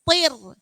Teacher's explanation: Karena sebelumnya itu adalah kasroh, maka dibaca tipis. Tir. Toknya tetap tebal.